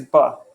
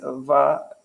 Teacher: In Bengali, you never pronounce anything va. I don't think a Bengali knows how to make that sound with their mouth, unless they like know some Hindi or something like that.